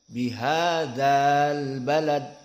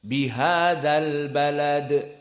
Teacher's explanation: Tapi dihilangkan madnya karena bersambung dengan 2 sukun al. Dinamakan iltaqa, bertemu baina sakinain, di antara 2 sukun.